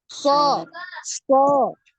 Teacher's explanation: bibir kita ini enggak gerak ya enggak gerak so so ya dia tidak tidak dimonyongkan ya tidak dibulatkan bibirnya